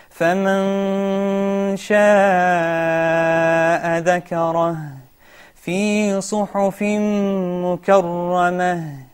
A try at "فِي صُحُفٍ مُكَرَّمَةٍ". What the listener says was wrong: Can we read again from verse number 11 and make sure that ذال doesn't have a qalqala? And make sure you give the ghunna of the idgham with ghunna fi suhufim mukarrama.